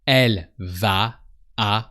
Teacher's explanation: the VA and the a sound like one word like a long a v so a long a but with a heavier end so